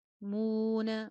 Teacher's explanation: میم کے ساتھ واو مدہ ہے، ہونٹ میکسیمم گول